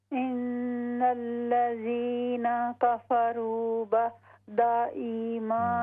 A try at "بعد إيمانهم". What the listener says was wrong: बाद आइन दुरुस्त करें